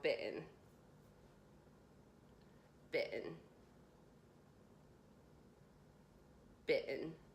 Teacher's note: I kind of moved my tongue to the roof of my mouth very briefly but again I really didn't pronounce the T strong whatsoever, or barely at all.